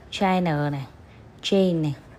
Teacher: chữ ch trong tiếng Anh nó sẽ bằng T và sh, sh nặng